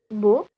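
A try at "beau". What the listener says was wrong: It's bo. Very good.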